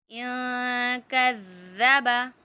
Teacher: ذال نرمی سے پڑھا جاتا ہے جبکہ زا سختی سے پڑھا جاتا ہے۔ ذال کو ادا کرنے کا طریقہ یہ ہے کہ آپ کے زبان کی نوک سامنے کے اوپر والے 2 دانتوں کے سرے پہ ٹچ ہوگی